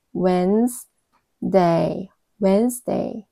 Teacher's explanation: 당연히 d는 발음이 나지 않죠. 여기가 발음이 되지 않네요. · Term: 묵음